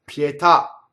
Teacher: So the accent is on the last syllable, pietà, right? So this is an ultimate stress.